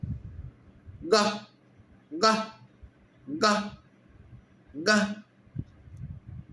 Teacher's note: गले से निकला, ना होठ हिल रहा है, न जीभ हिल रही है, न दांत हिल रहे हैं, गले के अंदर से निकल गया, गा गा।